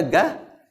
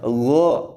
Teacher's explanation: Ga itu kalau baca ga, itu kan datar aja, tidak diangkat itu pangkal lidah. Nanti itu terangkat itu kalau dibaca go, terangkat itu.